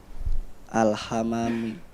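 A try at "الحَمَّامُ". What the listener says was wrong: Memnya ditasdid. Al-hammamu.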